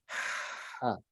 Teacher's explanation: I think what's missing is probably more aspiration, more of the lighter sound of the ha.